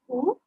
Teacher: when I say the vowel oo, my tongue is lowered, my jaws are slightly apart, my lips are puckered.